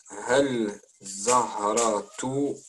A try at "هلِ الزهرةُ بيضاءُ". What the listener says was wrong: Alors, Adal, il y a un petit i là, tu le vois? Hali. Hali Zahratu. Liaison.